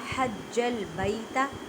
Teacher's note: یا ساکن سے پہلے زبر ہے تو یلین کریں، مینس کے نرمی سے پڑھیں